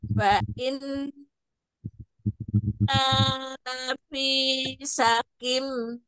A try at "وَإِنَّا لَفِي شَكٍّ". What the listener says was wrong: Belum masih sakim. Syakim. Tasdid kaf.